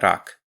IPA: ɾäk